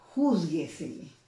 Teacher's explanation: donde lleva la mayor intensidad una sílaba antes del antepenúltimo